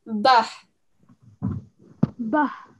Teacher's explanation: just remember the ha, that sound comes from your throat